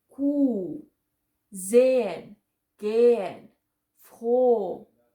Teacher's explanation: when Ha is in the middle or at the end of a word, then we don't pronounce it at all